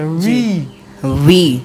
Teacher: মানে উপরের দাঁত নিচে নিচের ঠোঁটের সাথে চেপে গলার ভাইব্রেট হবে কম্পন হবে